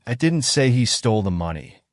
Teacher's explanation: the emphasis on he suggests that someone else stole the money